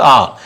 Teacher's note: और विवृत आ, सबसे अधिक मुख है वो आ में खुलता है